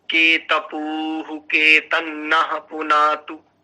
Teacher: उकार दीर्घ है और दीर्घ उकार के साथ वहां पर विसर्ग है, के तपु के तन्ना, ऐसा आना चाहिए।